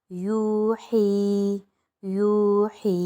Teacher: یہاں پر یو الف واو مدہ بن رہا ہے تو ایک الف کی مقدار، اور حی پر یا مدہ بن رہا ہے تو ایک الف کی مقدار کھینچیں گے۔